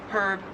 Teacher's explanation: In American English, herb, you just don't pronounce the H at all. And in Australian English, it is herb, you do pronounce the H.